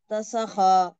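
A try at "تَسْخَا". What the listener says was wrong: खींचे नहीं जाना, खींचे नहीं जाना, खींचे नहीं जाना, जल्दी पढ़ना।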